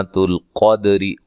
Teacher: تو القدری قاف کو موٹا، دال پہ قلقلہ، را کو باریک پڑھنا ہے ملانے کی صورت میں